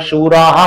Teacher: शूरा नंतर सुद्धा विसर्ग आहे पण त्याचा लोप झालेला आहे